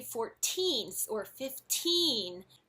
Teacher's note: When we say 14 or 15, the stress is on the teen.